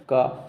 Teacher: क सीधा गले से आवाज निकल रही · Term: कंठ